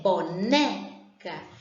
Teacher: Na palavra boneca, a sílaba que sai com mais intensidade é o né, boneca. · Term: sílaba tônica